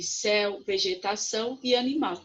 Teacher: temos aqui céu vegetação e animal são palavras oxítonas por quê porque a última sílaba é a sílaba tônica sílaba mais forte